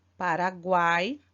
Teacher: Paraguai nós temos um tritongo porque o a é vogal o u e o i semivogal